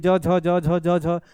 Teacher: वो छूना और रगड़ना दोनों एक साथ हो जाता है इसलिए उसको स्पर्श संघर्षी के नाम से जानते हैं